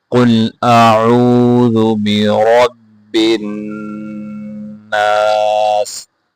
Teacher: قل قاف کو موٹا کرنا ہے, حمزہ عین دونوں کو واضح کر کے پڑھنا ہے.